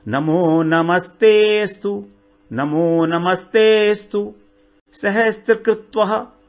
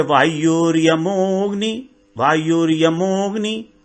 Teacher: जहां पर अ silent होता है उससे पहले जो मात्रा है ए की या ओ की, तो उसको हम थोड़ा सा और खींचेंगे।